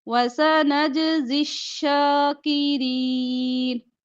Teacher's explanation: नज जीम पर कलकला होगा